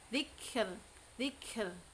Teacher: Karena kaf bukan qalqalah maka tidak boleh dipantulkan. · Ini ada hamsnya, ada syiddahnya juga ya.